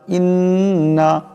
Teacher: হামজা নুন জের ইন নুন জবর না ইন্না, এখানে নুন মুশাদ্দাদ এক আলিফ পরিমাণ গুণনা হবে